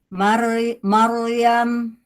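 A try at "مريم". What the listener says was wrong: Gimana rok tebalnya? Jadi si roknya kalau tebal jangan ditarik bibirnya.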